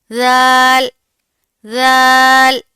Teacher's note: زال کا بھی سیم تا کا مخرج ہے. زبان کی نوک اوپر والے سامنے کے دو دانتوں کے اندرونی کناروں سے لگے گی تو زال ادا ہوگا.